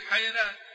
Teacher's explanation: وحيران بالتفخيم بعض، طبعا هنا نقص ضمة، لكن بعض تقبلها، فكلمة حيران، حيران له أصحاب يدعونه إلى الهدى في سورة أنعام، ورد عن ورش الترقيق والتفخيم فيها، فقال وحيران بالتفخيم بعض تقبلها، هي الأصل أن ترقق ولا تفخم على قواعد ورش، ها مسكنة ياء، مش ياء ساكنة، الياء الساكنة سواء انها مدية او ياء لينة، هنا ياء لين، فالمفروض يقول حيران، وكما يقول فاستبقوا الخيرات مثلا، لكن ورد عنه التدقيق والتفخيم في هذه الكلمة بخصوصها.